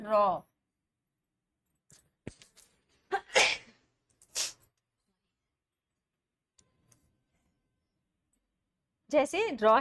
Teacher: जिन व्यंजनों के उच्चारण में जिह्वा को दोतीन बार कंपन करना पड़ता है। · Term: प्रकंपित